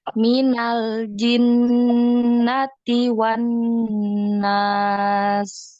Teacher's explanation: Sin yang di akhir itu coba dialirkan.